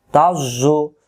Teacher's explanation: জ এর সাথে তাজ মুগল হবে তাজ জ পেশ জু তাজ্জু জ অক্ষরে জিহ্বা আগা থেকে মোটা করে পড়তে হয়